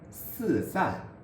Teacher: The tongue is held relatively flat, and the very tip of the tongue comes very close to the back of the upper or lower teeth to form the constriction. Because the tongue is held relatively flat, z, c, s are also called flat tongue sounds.